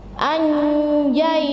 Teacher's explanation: Jadi dimasukkan ke dalam makhraj jim dan sedikit menengung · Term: ikhfa